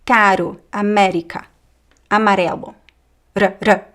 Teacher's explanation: Between two vowels, the R is like a flap, r, r. It's vibrant, but it's quick. It's not long, vibrant like the Italian R, like r.